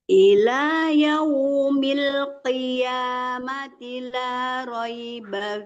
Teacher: ditebalkan qafnya ya Bu, jangan ki ya, jangan kaf kecil, itu qaf besar itu maksudnya isti'la dan tebal.